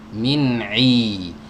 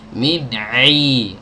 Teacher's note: ain itu bukan dari hidung, tidak melibatkan organ hidung sama sekali. Ya, tapi realitanya, faktanya di lapangan banyak yang membaca huruf ain itu keluarnya dari hidung.